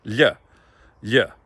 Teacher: We have the kind of palatal L sound in Gaelic, which is not a L sound